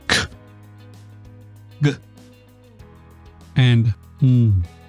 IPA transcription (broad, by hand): k, g and ŋ